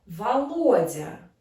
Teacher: the stress on the second syllable